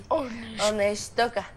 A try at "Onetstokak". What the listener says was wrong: Kak. Te estoy diciendo que con K.